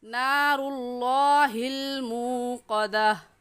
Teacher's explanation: लफ्ज़ अल्लाह को यहाँ पुर यानी मोटा करके पढ़ेंगे, क्योंकि लफ्ज़ अल्लाह से पहले वाले लफ्ज़ के ऊपर पेश है। और ये कायदा है कि लफ्ज़ अल्लाह से पहले वाले लफ्ज़ के ऊपर पेश आ जाए या ज़बर आ जाए तो उस लफ्ज़ को पुर यानी मोटा करके पढ़ते हैं।